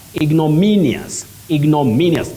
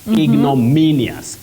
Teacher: the stress is on me ignominious